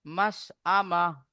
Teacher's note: মাস আম এখানে হামজা আছে হামজা জবর আ মিম জবর মাশআমাহ চেপে পড়লে কিন্তু আইন হয়ে যাবে হামজার হবে না